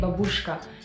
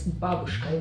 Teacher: It's not babushka, it's babushka. You should stress on the first syllables